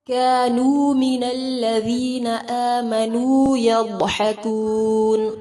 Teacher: كانوا من الذین آمنوا يضحكون، ضاد کو پر کریں گے، حا کو وسط الحلق سے ادا کریں گے